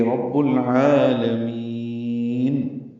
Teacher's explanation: عین وسط حلق سے ادا ہوگا، 2 حرکات لمبا کریں گے، لام کو جلدی پڑھیں گے اور میم کو لمبا کریں دیں گے.